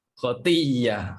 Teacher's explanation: Bacaannya kita idghamkan hamzah kepada huruf ya. Ibdalkan hamzah kepada ya, lepas tu kita idghamkan ya yang pertama itu ke dalam ya yang telah diibdalkan itu.